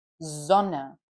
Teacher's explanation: So we say Sonne, yeah. We don't say Sonne, a sharp S. We say a soft S, Sonne, at the beginning of words.